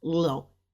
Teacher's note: you're saying it fast because it's on that fourth tone